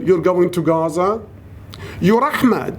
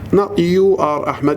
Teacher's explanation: so i have to raise my voice at the end